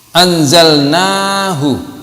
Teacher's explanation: Anzalnahu, na juga panjang, 2 harkat. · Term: Mad tabi'i